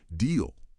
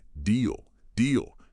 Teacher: it's a yes no question. So that intonation rises slightly at the end. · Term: rising tone